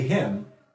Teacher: A Cockney person will say him, so the H won't be there.